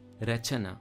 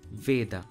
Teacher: Notice how Sanskrit adds an A sound to the end of each letter. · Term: Shwa